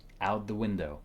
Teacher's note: These words blend together because T and TH are similar sounds. So out and the connect smoothly, almost like one word.